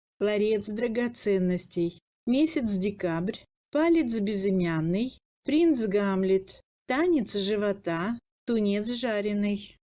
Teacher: Dans la chaîne parlée, en position finale du mot, devant l'initiale sonore du mot suivant, prononcé sans pause, le ts s'assimile. Ц plus consonne sonore devient dz.